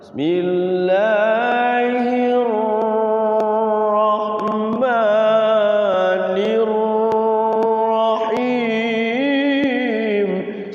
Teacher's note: Bismillahirrahmanirrahim itu ra-nya enggak boleh getar lama.